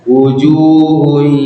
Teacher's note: Harusnya wujuhun, ada suara masuk hidungnya, itu namanya idgham bi gunnah naqis ya. Kalau bahasa istilahnya, kalau intinya kita harus masukkannya dengan ada tetap dengung di hidung kita.